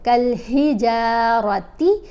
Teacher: یہ کاف جو ہے یہ موٹی نہیں ہے، کل پڑھا جائے گا